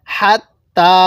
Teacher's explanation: তা এর মধ্যে আমরা এক আলিফ টান দিব খারা জবরের কারণে